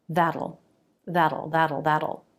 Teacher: we've got a flap T the tongue flaps up then the back of the tongue makes the dark sound